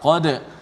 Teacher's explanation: Qa tebal, qad. Kemudian dal yang mati tu qalqalah, dibaca dengan nipis. Sadda, sa ditebalkan, dal yang satu tu dinipiskan.